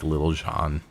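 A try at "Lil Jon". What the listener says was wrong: You don't pronounce the T. It's Lil John. It's not Little Jonathan. It's Lil John.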